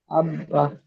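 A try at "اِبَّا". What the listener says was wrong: ইব দেখেন জবারনা জের আছে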